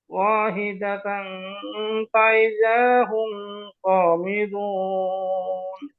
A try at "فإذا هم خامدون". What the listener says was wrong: এই যে ইদা হুম গুন্না হয়ে গেছে হুম খামিদুন